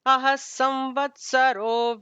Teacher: visarga followed by sa will have an extra emphasis, sa added to it.